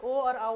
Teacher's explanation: इनके उच्चारण में ओठ और गले दोनों का प्रयोग हो रहा है। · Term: कंठोष्